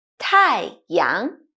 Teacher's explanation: Tai has the fourth dropping tone and young has the second Rising tone